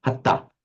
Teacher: the N drops out, so you don't have hanta, but hatta